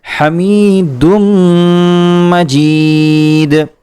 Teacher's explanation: دال کا میم میں ادغام کیا گیا ہے اور یہاں ادغام کرتے ہوئے ایک الف کے برابر غنہ کیا جائے گا